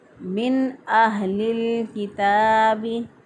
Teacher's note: नून साकिन के बाद जब हरूफ हलक़ी में से हमज़ा आ गया तो हम जो है इसको पढ़ेंगे इज़हार करके।